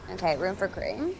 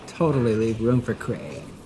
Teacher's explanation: we get the vocal fry that's at the end of almost every phrase where it drags the vowel out